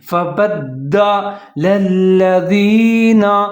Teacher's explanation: فا کے اوپر زبر ہے، با کے اوپر زبر ہے، آگے دال مشدد ہے تو با اور دال دونوں ملا کے پڑھیں گے، لیکن دال کو مضبوطی کے ساتھ پڑھیں گے